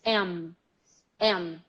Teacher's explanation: the am sound is what we call a bilabial sound because both lips touch say em you touch both lips em em regardless of the